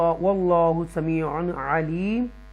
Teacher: اللہ کو تفخیم کے ساتھ پڑھیں گے، بولڈ پڑھیں گے، اور را کو بھی بولڈ پڑھیں گے تفخیم کے ساتھ۔